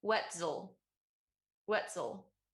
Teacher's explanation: i feel like i start with the z and then i start to de-voice it